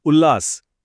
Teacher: उत के त ने जब लास के ल को देखा तो बिल्कुल सही, ल बन गया, उल्लास। है ना कमाल?